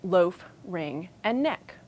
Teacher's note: all of those H's at the beginning got lost